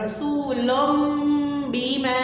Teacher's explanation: رسول میں نون کی آواز نہیں آئے گی، میم کی آواز آئے گی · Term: اقلاب